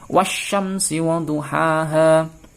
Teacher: Namanya idgham itu dimasukkan. Artinya al ini tidak usah dibaca, langsung dimasukkan ke huruf shin. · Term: idgham syamsiyah